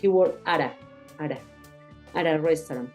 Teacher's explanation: la T tiende a unirse, entonces podemos decir he worked at a restaurant.